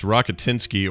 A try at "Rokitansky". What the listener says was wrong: Rokitansky with an A.